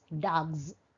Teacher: G is a voiced sound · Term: consonant assimilation